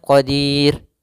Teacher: huruf ro karena dia disukunkan maka di sini dia jatuh hukumnya adalah hukum ro tipis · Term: ro tarqik